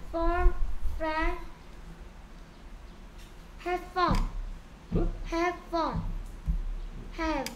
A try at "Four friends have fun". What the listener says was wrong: 자, 얘는 왜 소리 안 내? Friend인데 S 붙였을까? Friends.